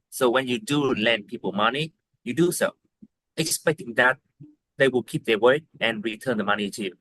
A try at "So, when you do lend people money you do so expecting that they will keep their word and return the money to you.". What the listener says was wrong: I dislike the way you're pronouncing these words. Like it's it's too choppy. Stretch the words out kind.